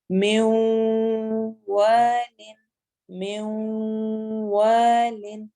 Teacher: نون ساکن کے بعد واو آ رہا ہے اس لیے ہم یہاں پر بھی غنہ کریں گے